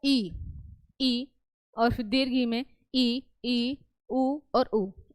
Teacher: संवृत स्वर इसमें मुख लगभग बंद रहता है